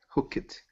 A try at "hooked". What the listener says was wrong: it's actually just one Sy and the e d sounds like a t so it's hooked hooked